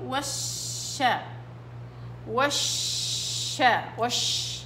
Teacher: اللي بصير انهم بيجيبوا الشين من طرف اللسان وليس من وسط اللسان. انتبهوا، الشين من وسط اللسان